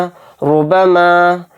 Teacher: रा के ऊपर पेश आ रहा है तो इसको पुर पढ़ेंगे यानी मोटा, इसको बारीक नहीं पढ़ेंगे। यानी पुर पढ़ने की सूरतें क्या क्या है वो मैं आपको बता देता हूँ, जो मैंने तख्ती के अंदर बयान की थी।